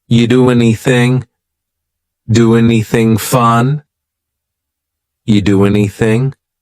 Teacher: And then the next word, anything. We sometimes drop the A, and we're going to push those two together because there's two N sounds side by side. · we link together doing because we're going to drop the G it ends with the sound n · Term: dropping linkings